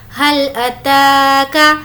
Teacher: تا کو کھینچ کر پڑھیں گے کیونکہ اس پر کھڑا زبر ہے۔